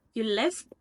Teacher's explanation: if you apply the rising intonation this phrase is becoming a question